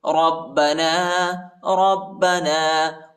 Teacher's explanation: را کو با کے ساتھ ملائیں گے، با کو شدت کے ساتھ سختی کے ساتھ پڑھیں گے۔